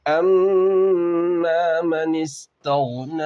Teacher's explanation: اما میں میم مشدد کا غنہ ہوگا